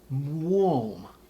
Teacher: the W sound in the front is going to round the lip corners. The M is going to bring the sound up into the nasal resonance, and then we're going to keep that nice round O vowel.